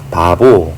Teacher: 첫 번째 비읍은 무성음은 P로, 두 번째 비읍은 유성음으로 각각 다르게 발음하고 있습니다. 바보 할 때 이 비읍은 발음이 약간 달라요. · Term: 무성음과 유성음